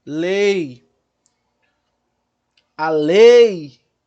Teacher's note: Então, aqui é vogal e o I é semivogal. Eu tenho vogal, semivogal, estou indo do forte para o fraco, então eu tenho ditongo decrescente.